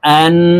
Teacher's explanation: جبر أن ওয়াজিব গুন্না, হরকতের বামে নুনের উপরে তাসদিদ আছে, তো এই হামজা তাসদিদওয়ালা নুনের সাথে নাকের বাসি থেকে গুন্নাহ করে পড়ব